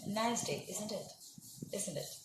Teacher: if it is boiling Indonesia nice day isn't it isn't it it is falling intonation then that is not a real question · It is falling intonation. Then that is not a real question. That is not a real tag question, because the speaker does not want an answer.